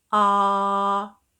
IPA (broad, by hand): ɑː